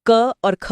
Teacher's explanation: आप हाथ मुंह के आगे रखकर क और ख बोलकर इसका अंतर महसूस कर सकते हैं। ख में ज्यादा हवा निकलती है।